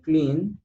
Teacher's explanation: the last sound is N, clean, and that sound has vibration